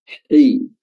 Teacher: huruf ha itu keluar udara, keluar hams, keluar nafas